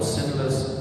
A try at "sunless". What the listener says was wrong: Sunless. Sinless. You said sinless, but sunless.